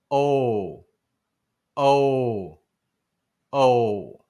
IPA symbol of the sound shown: o